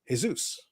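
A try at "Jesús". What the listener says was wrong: Said the J is silent. It's Jesus.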